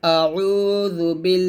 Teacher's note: আউজু পেশে পাতলা হবে